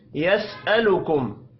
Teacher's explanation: मीम साकिन के बाद हमजा है, इजहार शफ़ी होगा, गुन्ना नहीं करना।